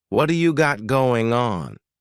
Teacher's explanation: that T at the end of the word what is going to change to a D sound. This is really typical of American English, where a T that's surrounded by vowel sounds is going to change to a D. · we're going to drop that G at the end of the word going on. What do you got going on? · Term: flapped T